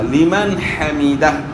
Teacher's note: اب یہاں لمن حمیدہ، نون ساکن ہے، نون ساکن ہے، اور نون ساکن میں غنہ ہوتا ہے، لیکن یہاں نون ساکن کے بعد حروف حلقی میں سے ہا ہے، تو اس لیے یہاں جو ہے اظہار ہوگا، غنہ نہیں ہوگا